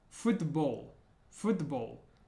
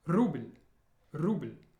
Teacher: And notice at the end of the word, the L sound is like ul in the back of the throat